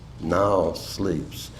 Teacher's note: The keynote term is now, which in consequence, though it lacks a metrical stress, invites an intonational stress.